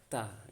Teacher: sama seperti bahasa Indonesia, tapi untuk dia sifatnya ada udara yang keluar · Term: huruf ta